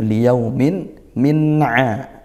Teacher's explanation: izhar halqi karena tanwin bertemu ain ya. Dibaca jelas